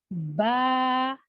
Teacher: جب دونوں ہونٹوں کو ہم ملا کر منہ کو کھولتے ہیں تو ورڈ با ادا ہوتا ہے